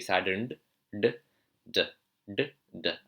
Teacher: The d in the Indian accent, you curl your tongue.